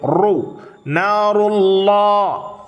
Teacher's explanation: அல்லாஹிலே உள்ள லாமும் தஃபீமாக. லாம் ஜலாலியா, லாமுக்கு முந்தைய எழுத்த ரா தம்மா பெற்றிருக்கிறது. · நாருல்லாஹில் மூகதஹ் அல்லதி தத்லிஉ அலல் அஃஇதஹ் إنها عليهم مؤصدة في عمد ممددة. நாருல்லா, ராவும் தஃபீமாக உச்சரிக்க வேண்டும்